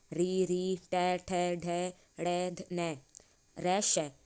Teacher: इन सब का उच्चारण मूर्ध स्थान से होता है